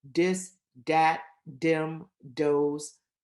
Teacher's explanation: very common in that pre-vocalic position that means before a verb at the beginning of a sentence the voice th becomes a d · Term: voiced TH becomes a D